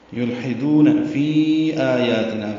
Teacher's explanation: فی میں مد منفصل ہے، یا مدہ کے بعد حمزہ آنے کی وجہ سے